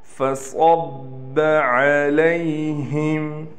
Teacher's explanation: صاد کو یہاں موٹا کر کے پڑھیں گے، با پر تشدید ہونے کی وجہ سے با پر تھوڑا سا ٹھہراؤ کیا جائے گا